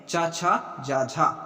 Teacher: तालब्य व्यंजन है चा, छा, जा, झा, ये है तालब्य।